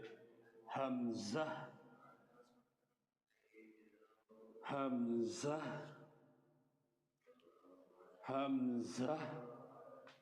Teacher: হামজা হলকের শুরু হইতে